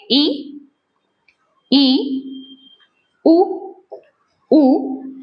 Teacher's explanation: वे स्वर जिनके उच्चारण में मुख थोड़ा खुले थोड़ा या फिर हम कह सकते हैं कम खुले उन्हें हम क्या कहेंगे समृत स्वर कहेंगे